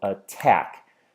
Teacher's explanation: can feel that if I clap my hands I go attack I can definitely hear that the tack is where the stress falls